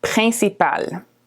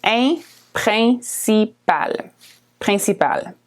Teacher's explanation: The IN is a nasal vowel.